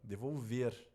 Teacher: que tá a sílaba tônica de vou ver aqui ó devolver a sílaba tônica é a última então é uma oxítona